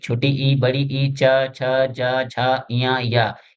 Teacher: ये जब हम इनका उच्चारण करते हैं तो ये जीभ हमारी तालु को टच करती है। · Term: तालव्य वर्ण